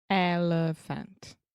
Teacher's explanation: the elephant, the middle sound, that's the schwa